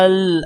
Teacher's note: کیونکہ کھڑی زبر بھی ہے اور مد بھی ہے آپ کو لمبا کریں پھر لام کے ساتھ ملائیں